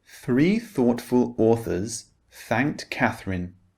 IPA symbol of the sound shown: θ